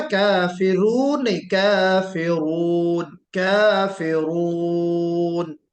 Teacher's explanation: रा को मोटा जरूर करना है ना